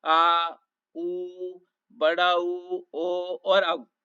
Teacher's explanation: जिन स्वरों के उच्चारण करने में जिभ के जड़ भाग से होता है वे पच्छ या जड़ स्वर कहलाते हैं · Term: पच्छ स्वर